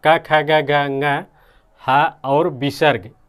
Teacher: क ख ग घ अंग, ह और विसर्ग, ये जो है कंठ से बोले जाते हैं।